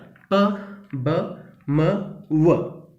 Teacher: ബൈലേബിയൽ consonants produce ചെയ്യാൻ രണ്ട് ലിപ്സും involve ആണ്. Lower lip is the active ആർട്ടിക്കുലേറ്റർ, upper lip is the passive ആർട്ടിക്കുലേറ്റർ.